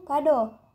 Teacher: vokal o Tengah atas belakang bundar